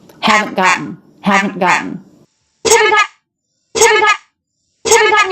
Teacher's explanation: When we have T, schwa, N, that T is a stop T. So it's not gotten.